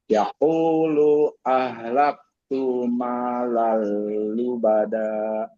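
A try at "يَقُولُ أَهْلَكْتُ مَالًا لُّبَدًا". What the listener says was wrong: Lu-nya jangan panjang. Ahlak tu-nya jangan panjang.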